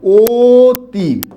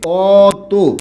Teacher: অর্থাৎ এখানে ছিল অ, উচ্চারণ হয়েছে কি? ও। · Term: সংবৃত